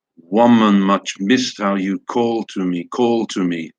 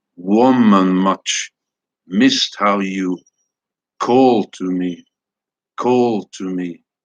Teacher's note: Stressed, unstressed, unstressed. Each foot, each poetic foot, each unit of the line is three syllables long in this case. Stressed followed by unstressed, unstressed. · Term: dactylic meter